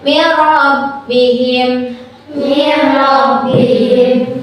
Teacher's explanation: Cara bacanya nun matinya dimasukkan ke huruf ro tanpa ditahan. Jadi langsung aja min rabbihim. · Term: idgham bila guna